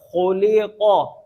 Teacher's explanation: ख़ा को भी मोटा क़ाफ को भी मोटा